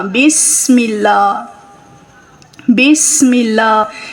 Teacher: اگر آپ پڑھتے ہوئے بسم اللہ بسم اللہ پڑھتے ہیں تو یاد رکھیں سین کے اوپر کبھی بھی آواز کو ہلانا نہیں ہے، کلکلا نہیں کرنا ہے. سین کے اوپر سیٹی کی آواز آئے گی اور نرمی کے ساتھ سین کو ادا کیا جائے گا، آواز کو ہلانا نہیں ہے